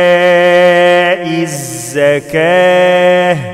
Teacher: الياء فيها مد واجب متصل أربع حركات وإيتاء الزكاة بنقف على التاء المربوطة بحولها الهاء والواو لا تنطق